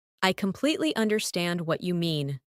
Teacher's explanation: Emphasize completely and understand